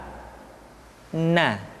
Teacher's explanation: menyentuhkan ujung lidah kita di antara posisi ro dengan la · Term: huruf na